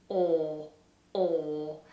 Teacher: And the final vowel sound that we're going to look at is the OR vowel. In British English, this is a huge space inside the mouth, the lips are rounded, and the vowel doesn't move.